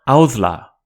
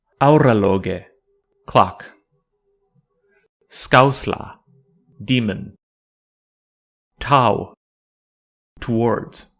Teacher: Though it is written as the long version of ore, audla, like aimate, is a diphthong which does not have a short equivalent. It represents the diphthong au, which is very similar to the OW in English how, but the onset is a little more open. It is transliterated by the letter O with a macron.